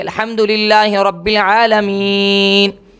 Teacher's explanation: آیت کے ختم پر جب ہم وقف کرتے ہیں ناک میں آواز چلے جاتی ہے